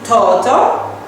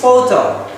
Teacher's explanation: So this is the F sounds is replaced by T sounds.